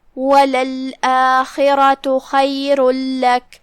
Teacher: ہم خاء کو حلق کے اوپر والے حصے سے ادا کریں گے۔ پھر یہاں را ہے اور اس پہ زبر ہے، یہاں را کا حکم ہے تفخیم، لہذا اسے بھاری آواز میں پڑھنا ہے۔ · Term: حرف الخاء